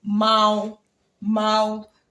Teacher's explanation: Now this is mao with a flat tone